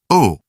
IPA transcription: ʊ